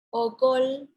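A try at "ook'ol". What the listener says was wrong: La penúltima palabra me la leíste como si fuese una vocal corta. No, la penúltima. La primera vocal es una vocal larga, es okol.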